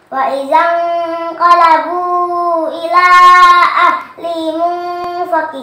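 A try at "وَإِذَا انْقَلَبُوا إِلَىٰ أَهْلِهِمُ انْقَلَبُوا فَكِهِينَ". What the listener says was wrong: Qalabu fakihin. Qalabu fakihin. Nah, qalabunya dua kali. Lagi.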